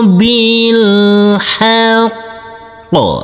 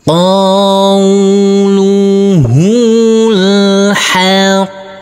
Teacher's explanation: Huruf qaf yang bertasydid ini harus kita tekan, kita tahan, baru kita pantulkan. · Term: huruf qaf bertasydid